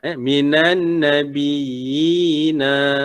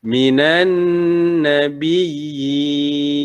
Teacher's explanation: Okey, ataupun kes yang kedua, ketika kita nak waqaf ya, ketika kita nak waqaf ni ya, huruf sukun, iaitu ketika bertemu sukun kerana diwaqafkan, maka hukumnya, hukum mad tamkin ini menjadi mad arid lisukun yang panjangnya 2, 4 atau 6